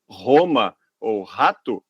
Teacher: se nós dissermos o nome da capital italiana, Roma, com esse R que a gente fala no português, a gente não vai estar dizendo o nome da capital da Itália, a gente vai estar falando home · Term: som da letra R